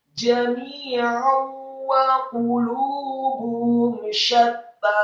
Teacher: Hukum bacanya adalah idgham bi gunnah, memasukkan dengan dengung.